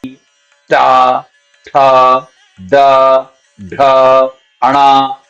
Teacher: मूर्धन्य वर्ण के समय पर जीव हमारे ऊपर जाती है और मुर्धा के साथ टकराती है